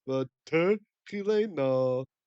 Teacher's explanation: Ibn Ezra excitedly points out that this word is a geminate, the double lamed. So you got the dagish and the lamed, you got It's Chait Lamed Lamed, and then sometimes they'll double and you get just a Dagesh, showing that there's two there, or sometimes it just disappears.